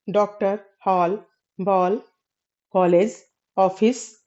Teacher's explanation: आ और ओ ध्वनियों के मध्यवर्ती ध्वनि है। आ और ओ ध्वनियों का जो उच्चारण होता है उसके मध्य का जो उच्चारण होता है वह औ होता है। · अब देखते हैं अ ध्वनि के बारे में अगर देखें तो हिंदी के 11 स्वरों के अतिरिक्त अंग्रेजी के डॉक्टर, हॉल, बॉल, कॉलेज, ऑफिस जैसे शब्दों के लिए बोली जाने वाली जो आ ध्वनि है, वह ध्वनि जो है वह आ और ओ ध्वनियों की मध्यवर्ती ध्वनि है। आ और ओ ध्वनियों का जो उच्चारण होता है उसके मध्य का जो उच्चारण होता है वह अ होता है।